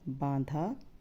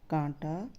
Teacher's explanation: उनको बोलते हुए आवाज मुंह एवं नाक दोनों से निकलते है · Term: अनुनासिक